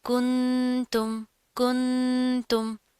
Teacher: آواز میں نون کی جو آواز ہے اس کو ناک میں چھپا کر پڑھیں گے۔ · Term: اخفاء